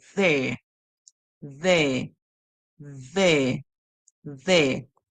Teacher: So we're going to be tongue between our teeth, and then we hear air.